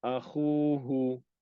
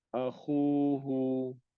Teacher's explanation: Jangan akhuhu. Tak boleh hu, jangan panjang. Dia yang panjang pada kha ni. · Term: huruf mad